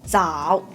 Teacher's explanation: third tone will be firstly falling down first and then go up a little bit in the end. So it will be 早.